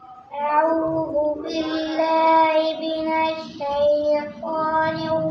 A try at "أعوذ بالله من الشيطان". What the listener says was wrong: سین کو صحیح ادا کریں. من الشیطان سین، من الشیطان.